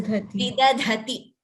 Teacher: The first the is alpa prana. Second the is mahaprana.